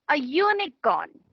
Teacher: Unicorn is spelled with U but again pronounced with Y.